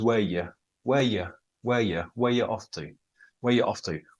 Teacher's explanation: Where are you becomes where you